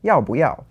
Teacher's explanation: so you have to change the bù to bú